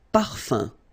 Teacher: So remember, even if you've got this UM like that, phonetically it's exactly the same thing as if you would have UN. So it's nasal and it's un. So it really goes in your nose. You don't pronounce the M at all.